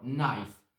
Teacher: Silent K. You pronounce only N sound.